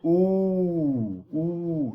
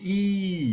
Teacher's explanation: The lips, if you say ooh, ooh, you make a low pitch. If you say ee, you make a high pitch.